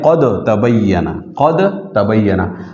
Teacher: तो दाल जो है साकिन, इस दाल को ता से बदल दिया जाए तलफ़ुज़ में, ठीक है। ये बदलना जो है ये तलफ़ुज़ में होगा, ये कुरान की लिखाई में नहीं होगा। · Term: इदगाम